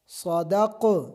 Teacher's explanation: قاف موٹا جو ہے اس میں قلقلہ ہوگا، اور کاف جو کتاب والا ہے اس میں قلقلہ نہیں ہوگا